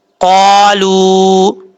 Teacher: یہاں پر واو مدہ ہے، ایک الف کی مقدار لمبا کر کے پڑھیں گے